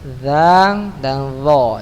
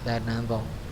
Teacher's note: Za dan dha sama tempatnya ya. Berada di gigi seri atas ya.